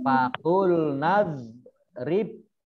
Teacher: Nah, ini faqul nadrib ini nun fathah alif harusnya mat tabi'i tetapi huruf depannya itu sukun maka langsung masuk ke huruf berikutnya tidak dibaca panjang ya